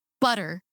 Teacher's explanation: And I may be remembering this not fully correctly, but I that stuck with me is that and we tend to when we're emphasizing a syllable in a word like butter, >> that first syllable is stronger than the second syllable